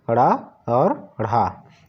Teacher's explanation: जिन वर्णों का उच्चारण करने पर जीभ ऊपर उठकर तुरंत नीचे गिरती है तो इसे हम द्विगुण व्यंजन कहते हैं। उसके अलावा इसे उत्क्षिप्त व्यंजन के नाम से भी जाना जाता है।